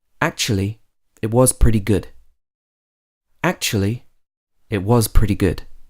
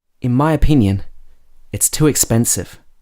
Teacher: So can you hear how my voice is rising and then falling again in pitch? When you're using words that introduce or set up the rest of the sentence, normally you use rising intonation for these words.